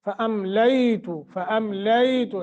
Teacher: لے کو نرمی کے ساتھ تھوڑا سا لمبا کریں گے